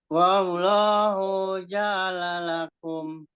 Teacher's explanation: Hu-nya juga hati-hati, hu-nya juga nggak dipanjangkan.